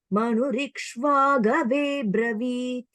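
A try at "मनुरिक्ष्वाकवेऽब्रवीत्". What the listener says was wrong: Okay, நீங்க படிச்ச அந்த இதுல பிரவீத்னு படிக்கிறோங்க. நம்ம இங்க வந்து அப்ரவீத். ஏன்னா அப்ரவீத் தான் அதோட மீனிங்.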